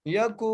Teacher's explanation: کاف کو ایک الف کی مقدار کھینچ کے پڑھ رہے ہیں